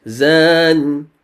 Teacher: That means it's also 2 harakat. Zan, this is 4 harakat because it's at the end of an ayah